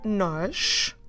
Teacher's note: You can spot a sh sound at the end.